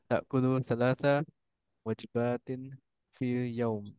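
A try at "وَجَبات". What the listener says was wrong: La. Jimnya harus pakai fathah. Nah, wajabatin.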